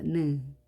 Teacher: 느는 치경 뒤에 완전히 혀끝을 닿아서 발음이 됩니다.